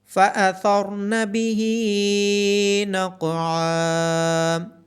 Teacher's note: ثا کی آواز نرمی سے ادا کی جائے گی، را اور قوف کو موٹا پڑا جائے گا۔ عین کی آواز گلے کے درمیان سے آئے گی۔